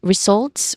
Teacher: We stress on the second syllable here.